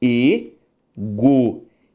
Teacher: Ao fazer a separação de egoísmo, eu tenho egoísmo. A sílaba tônica é a penúltima.